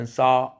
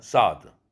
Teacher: 현재형일 때는 saw 길은데 과거형 ed가 붙으니까 sawed. 그 모음 길이가 짧아졌어요.